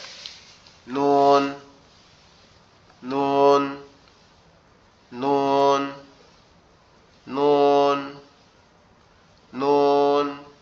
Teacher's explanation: জিহ্বার আগা তার সামনের বরাবর উপরের তালুর সঙ্গে লাগায়